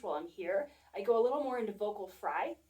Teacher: I go a little more into vocal fry, and that comes from a little more tension going on in my throat versus being here.